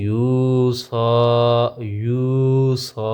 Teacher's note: واو مد ایک الف کے برابر لمبا ہوگا